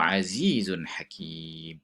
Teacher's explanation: Tanwin bertemu dengan ha adalah hukum izhar halqi. Kena jelaskan. Kena jelas bacaannya. Wa sallallahu ala sayyidina Muhammad wa ala alihi wa sahbihi wa sallam.